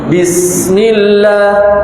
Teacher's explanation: Huruf sin di dalam pengucapan bismillah. Maka sin itu dia mempunyai sifat mengalir bablas, atau dalam istilah tajwidnya disebut rokhawah. sin Pak, itu harus dialirkan bablas.